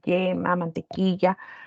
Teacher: Una Y de una Y, yema, mantequilla, lo pronuncian mucho más, pero en general nosotros tenemos yeísmo, lo pronunciamos de igual forma